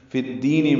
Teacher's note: فا کو دال سے ملا دیں گے، ادغام شمسی ہوگا